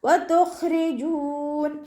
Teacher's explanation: വാവ് ഉച്ചരിക്കുമ്പോൾ ചുണ്ടുകളൊന്ന് വട്ടത്തിൽ പിടിച്ചിട്ട് ഉച്ചരിക്കുക. പല്ല് ചുണ്ടിൽ തട്ടാത്ത രൂപത്തിൽ വെക്കണേ.